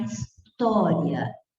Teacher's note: Então, eu estou vendo que em história eu tenho a vogal A e o I, então, é a semivogal. Você percebe que a pronúncia é mais fraca no I e se torna mais intensa no A, porque a vogal é mais forte. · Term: ditongo crescente